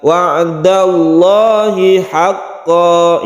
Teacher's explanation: ini juga Mad iwad lafadz Allahnya ini Abdul jalalah yang tafkhim karena sebelumnya ada fathah maka lamnya disebut lam yang tafkhim atau kita tebalkan